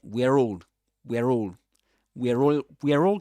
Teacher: it's a ra sound that appears to link, right? The end of one word with the beginning of the next one. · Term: linking